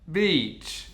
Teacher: If you don't do the long /i/ sound, it unfortunately becomes a bitch. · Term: long E sound